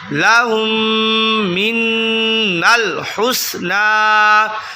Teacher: میم ساکن ہے، اس کے بعد دوسری میم آ گئی، تو یہاں ادغام شفوی کا قاعدہ ہوگا، غنہ کیا جائے گا۔